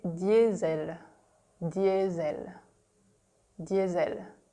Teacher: the S is pronounced Z in French because it's between two vowels